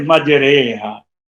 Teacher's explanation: अलिफ है जो अलिफ और या के दरमियान पढ़ा जाता है, ना ये खालिस अलिफ है और ना ये खालिस या है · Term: इमाला